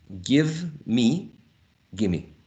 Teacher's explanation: The labiodental v is not present here, right? So there is also an elision. So we have a reduction.